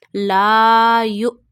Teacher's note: you read Hamza Sakina with a sudden jerk